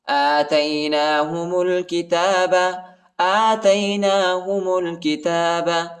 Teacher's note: میم کو لام کے ساتھ ملائیں گے، الف نہیں پڑھا جاتا، الف کے اوپر حرکت نہیں ہے